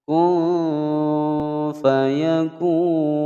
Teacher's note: ada mad tabi'i bertemu dengan huruf hidup di akhir kalimat ya, dan matinya karena diwaqafkan. Hukum bacaan mad arid lis sukun. · nun sukun bertemu fa disamarkan dan didengungkan